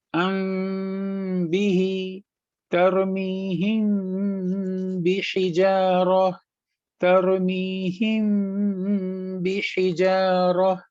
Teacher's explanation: جب با آئے میم کے بعد قرآن کریم کی تلاوت میں، تو ہم میم کی جو آواز ہے اس کو ناک میں چھپا دیں گے، ٹھیک ہے۔ اب جیسے میم آیا اس کے بعد با آیا تو ہم میم کی آواز کو ناک میں چھپائیں گے 2 سیکنڈ کے لیے، اس کے بعد ہم آگے پڑھنا شروع کریں گے۔